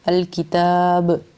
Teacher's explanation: وَلَقَدْ آتَيْنَا مُوسَى الْكِتَابَ، اگر ہم وقف کرتے ہیں یہاں پہ رک جاتے ہیں الکتاب پہ تو یہاں پہ ہم قلقلہ کریں گے با پہ